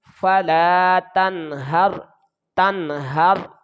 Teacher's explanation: ادائیگی کے دوران نون پر غنہ نہیں ہوگا، اس کو فوراً ادا کریں گے. اور ہا کو را کے ساتھ ملائیں گے تو یہ غیر قلقلہ ہے تو وقف میں کوئی تبدیلی بھی واقع نہیں ہوگی. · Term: اظہار